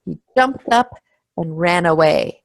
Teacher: the final N there goes on to away